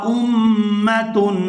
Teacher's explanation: حمزہ کو میم مشدد کے ساتھ ملائیں گے تو غنہ کریں گے اور آگے تنوین پر اخفا کیا جائے گا، اخفا اور غنہ کی آواز ناک سے ہی ادا ہوگی۔